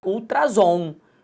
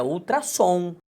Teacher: para não gerar o som de Z e sim o som de S